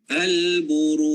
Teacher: Ada pantulan di bahagian belakang. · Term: qalqalah